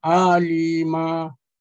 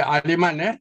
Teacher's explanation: Tanwin ni kalau dah fathatain bagi atas dua, kita kena berhenti dan kita kena gantikan dengan alif. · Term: mad iwad